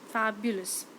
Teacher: in the word fabulous fab is the long syllable followed by the two short syllables thereafter